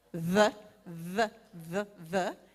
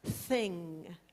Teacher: the first sound there is the vocalized th sound the the the the and the second is the unvoiced th sound thing